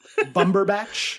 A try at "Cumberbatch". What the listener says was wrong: There's one letter you've got wrong. Not Bumber. You said Bumberbatch. Yeah, that's where you got confused.